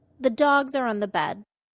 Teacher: The de-stressed function words, said quickly, were the, are, and on.